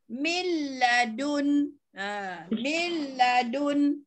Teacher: Jadi tak ada pusing-pusing lah, tapi jangan didengungkan seperti mana idgham ma'al gunnah.